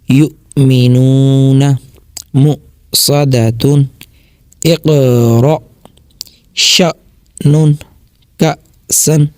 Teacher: اچھا اب غور کریں گے نا، یہ سارے لفظوں میں اوپر جو ہے نا حمزہ ساکنہ آیا ہوا ہے، ٹھیک ہے، تو اس کو جھٹکا دے کے ہی پڑھیں گے